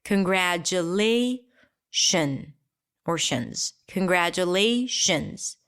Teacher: the T here is not a T. It's a J sound.